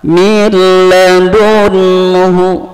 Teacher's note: idgham bila gunnah, maka tidak pakai dengung, maka suara n-nya masuk ke huruf lam, min ladunhu, ya.